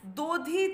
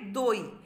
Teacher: পরিষ্কার দেখো যে ধয়ের যে হর্ষই সেটা থেকে গেছে, শুধু ধ ব্যঞ্জন ধ্বনিটা লোপ পেয়ে গেছে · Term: অন্ত ব্যঞ্জন লোপের